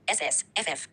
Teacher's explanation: Since the airflow continues, even though it is turbulent, they are classified as plus continuant. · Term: fricatives